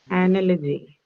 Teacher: the first sound in analogy is the schwa sound it's unstressed anyway it is not going to take this stress so even